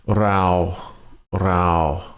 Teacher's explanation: No marker up here, so it's a flat tone in your normal voice.